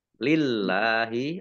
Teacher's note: lillahi Allahnya dibaca tipis karena harakat di depannya kasrah